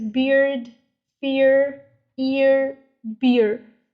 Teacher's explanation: the first vowel sound is much longer and much stronger than the second part or second vowel sound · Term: diphthongs